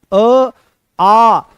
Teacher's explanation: अ और तुरंत बोलो आ, अ आ, दोनों कंठ से निकल रहे हैं